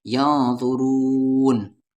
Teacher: نون ساکن کے بعد ذا ہے اور ذا حروف اخفا ہے تو ین نہیں